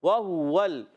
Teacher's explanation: واو آ رہا ہے، پیش آ رہا ہے، ہونٹ گول کریں گے